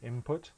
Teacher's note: the the n in input if you're saying it quickly input you might close your lips during the n and make it into an m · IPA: /m/